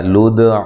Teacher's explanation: قالوا ادع لنا ربك يبين لنا ما هي، قا الف مدہ، ٹھیک ہے، قاف کو موٹا کرنا ہے. لدع، دال پہ قلقلہ کرنا ہے، عین کو لمبا نہیں کرنا